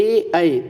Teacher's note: अगर आप ए और ऐ बोलोगे तो आप देखिएगा कि आपकी तलुआ से आपकी जीभ टच होती है। ए ऐ तलुआ आपका दबा होता है, तलुआ के माध्यम से आवाज़ निकलती है, ए ऐ तो होता है कंठ तालव्य।